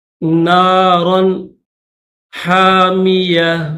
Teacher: تنوین کے بعد حروف حلقی ہا ہے تو اس وجہ سے یہاں پر غنہ نہیں کیا جائے گا۔